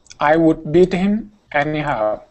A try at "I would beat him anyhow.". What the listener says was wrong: Good, much better.